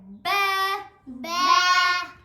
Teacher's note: با دونوں ہونٹوں کے اندرونی کناروں سے ادا ہوتا ہے